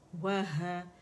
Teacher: ہا کہاں سے ادا ہو رہا ہے اقصی الحلق سے ادا ہو رہا ہے